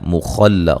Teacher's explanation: خا کو موٹا ادا کریں گے، دو و مدہ ہے